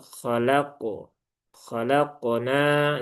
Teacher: Ini juga jangan sampai pantulannya menipis. Dia huruf tebal, maka huruf isti'la pantulannya pun juga menebal